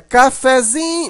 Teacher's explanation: o fé ele não é tão fraco Mas ele também não é tão forte como o Zin a sílaba forte mais forte aqui é o Zin · Mas na hora que você transforma essa palavra para cafezinho, você observa que o fé, ele não é tão fraco, mas ele também não é tão forte como o zin. A sílaba mais forte aqui é o zin, né? Cafezinho, mas o fé continua um pouquinho forte. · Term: sílaba subtônica